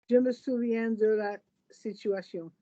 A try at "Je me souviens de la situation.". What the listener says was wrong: No, I can't hear the la in a voweled way. Je me souviens de la situation.